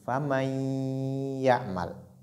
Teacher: cette catégorie, elle se fait avec nasalisation, avec ghunna